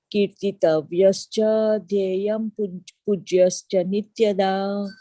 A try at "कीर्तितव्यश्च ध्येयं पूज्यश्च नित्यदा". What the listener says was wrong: Yeah, Shrotavya, Kirtitavyashcha is good. I don't think you need the Visarga there. And similarly, Dheya, it is Dheya. It's not Dheyam, it's Dheya. Pujashcha Nityada.